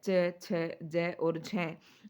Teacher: है च छ ज और झ यह जो हमारा वर्ग है यह स्पर्श में तो आता ही है साथ में यह संघर्षी भी है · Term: स्पर्श संघर्षी